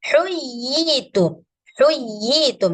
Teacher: Ini namanya mat tamkin, panjangnya 2 harkat.